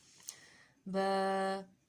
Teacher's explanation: با کا مخرج ہے بند ہونٹوں کے گیلے حصے سے۔